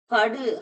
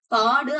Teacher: படு, பாடு அப்படின்ற சொற்கள்ல படு அப்படின்ற இருக்கிற டூக்கு குற்றியலுக்கு இருக்கக்கூடிய ஒரு மாத்திரை ஒலி முழுவதுமாக இருப்பதையும், பாடு அப்படின்னு நம்ம சொல்லும் போது அந்த மாத்திரை டூவோட மாத்திரை ஒலி குறுகி ஒலிப்பதையும் காணலாம் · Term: குற்றியலுகரம்